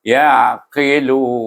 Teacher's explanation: dia berakhir dengan huruf mahraj nun, lidah kita pergi kepada mahraj nun, iaitu dengan hukum mad arid li sukun.